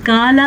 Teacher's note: क़ाला अगर आप इसको पढ़ेंगे काला तो वो बारीक काफ बन जाएगा, लफ्ज़ गलत हो जाएगा।